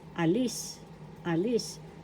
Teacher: The second syllable has the accent